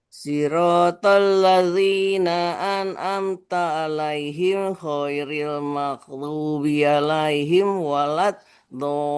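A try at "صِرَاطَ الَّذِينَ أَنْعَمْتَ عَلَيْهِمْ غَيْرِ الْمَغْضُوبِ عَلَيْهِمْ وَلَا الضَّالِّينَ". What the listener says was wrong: Ngebut. Jadi ini dikuatin ya. Kalau ain ini bukan an tapi an'amta. Jadi ditekan dia.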